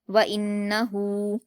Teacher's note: نون پر تشدید ہے تو غنہ کے ساتھ جلد پڑھیں گے